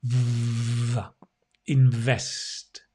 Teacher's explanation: It's quite a difficult V. You need your lips to vibrate against your teeth, and it's voiced.